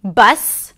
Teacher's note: small, sharp, more closed, neutral, closer to an a sound.